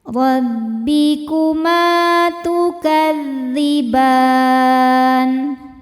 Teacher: Ma mad thabi'i zhahiri, sebab ada alif didahului harakat fathah. Cara bacanya dipanjangkan dua harakat.